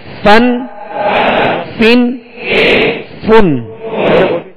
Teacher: اوپر کے سامنے والے دونوں دانتوں کے جو کنارہ ہے وہ نچلے ہونٹ کے تر حصے سے لگے تو فا ادا ہوتا ہے. فا اس کو فا واو کی طرح ادا نہیں کریں گے اور نہ ہی دونوں ہونٹوں کو ملا کے پھا پڑیں گے، بلکہ اوپر کے سامنے والے دو دانتوں کے کنارے اور نچلے ہونٹ کا تر حصہ یہ مخرج ہے، یعنی نکلنے کی جگہ ہے فا کی.